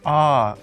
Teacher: Ah is the second tone. The third tone falls first and then rises. Ah, like the track of a roller coaster.